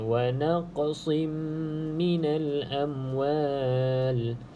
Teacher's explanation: huruf Qaf ni salah satu daripada huruf qalqalah. Jadi perlu ada lantunan.